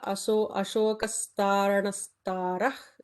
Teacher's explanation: visarga followed by sha will add an extra sibilant